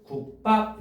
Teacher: 기억받침 뒤에 비읍을 만났지. 그래서 비읍이 쌍비읍으로 발음되고 있죠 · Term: 된 소리 되기, 된소리